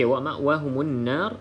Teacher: mim dan juga Nun yang bersabdu kita baca dengung dua harakat